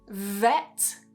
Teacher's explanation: So V is usually pronounced with the top teeth just pressing on the inside here. Very, very similar to a F sound, but you're just adding voice and vibration. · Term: V sound